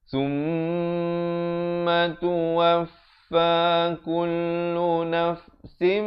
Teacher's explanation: tanwin bertemu mim idgham bi gunnah didengungkan 2 harakat.